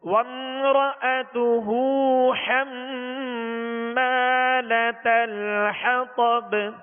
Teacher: حما یہاں غنہ کریں گے، میم نون جب بھی مشدد ہوں، جب ان پر شد آ جائے، شد تشدید جو کہتے ہیں 3 دندان والی شکل کو کہتے ہیں، تو حما اس کے اوپر شد ہے، اس میں غنہ کریں گے.